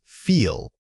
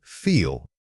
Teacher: When you say feel, consciously exaggerate the length of that e sound. It should feel like a sustained note coming from your throat.